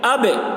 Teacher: حمزہ با زبر اب، با حروف قلقلہ میں سے ہے اور اس پر جزم ہے، اس لیے با میں قلقلہ ہوگا۔ اب دیکھیے، اب با کی آواز ٹکرا رہی ہے، اسی کو قلقلہ کہتے ہیں